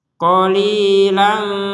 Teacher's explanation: fathatain bertemu dengan huruf ta yaitu dibaca dengan samar disertai sedikit dengungan